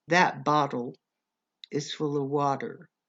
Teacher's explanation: When we have two T's in a word, we almost always pronounce the two T's as a D.